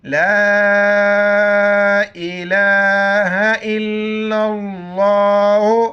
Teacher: ला अलिफ मद्दा है, 4 अलिफ खींचेंगे।